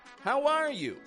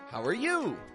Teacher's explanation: So person number one stresses R. How are you? Person number two stresses you.